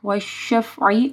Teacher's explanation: عین کو گلے کے درمیانی حصے سے پڑھنا ہے